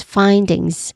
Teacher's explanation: a nasal sound and J sound, and then a buzzing sound at the end